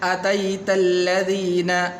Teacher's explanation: یا حروف لین میں سے ہے، تو اس لیے یہاں پر لمبا بھی نہیں کریں گے